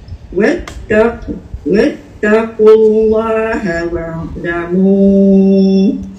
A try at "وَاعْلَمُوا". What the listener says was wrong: Wa'lamu kan. Yang tu macam kak seret kat dia kan. Wa'lamu ain tu. Wa'lamu jangan wa tu panjang. Ain tu panjang.